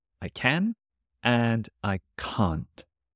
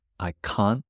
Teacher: It's tricky because the T stops in my throat.